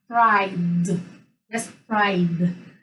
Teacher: So it's y, it's voiced. We use our vocal cords to pronounce it. That's why we pronounce the ending as d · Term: voiced sound